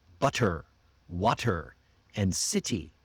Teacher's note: But in America, we don't use that crisp t sound. Instead, Americans have a sound that's almost like d. · It's a quick, relaxed sound that replaces the T between vowels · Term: American flap T